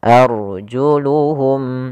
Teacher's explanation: apabila rnya sukun didahului dengan fathah maka dia dibaca dengan ro tafhim ro tebal · A-nya tipis tapi ra-nya tebal. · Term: ra tebal